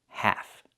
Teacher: The L is silent and the A makes the A sound like in black cat.